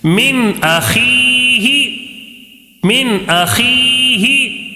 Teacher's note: یا ساکن سے پہلے زیر ہے، تو یہ کیا قاعدہ ہوگا؟ یا مدہ ہوگا، یا مدہ ہوگا. تھوڑا سا کھینچ کر پڑھیں گے ایک الف · نون کی آواز کو ظاہر کر کے بغیر غنہ کے جلدی پڑھیں گے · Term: نون ساکن کا اظہار